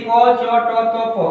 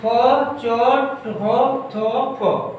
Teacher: को बोलने में कम आपको वायु की जरूरत पड़ता है, उसी के अलावा बोलिए ख, देखिए अधिक वायु की जरूरत पड़ेगा